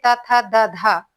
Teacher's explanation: दंत यानी दांतों के मूल से